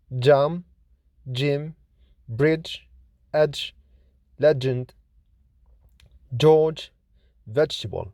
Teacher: J is voiced, lenis, palato-alveolar, affricate consonant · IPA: /dʒ/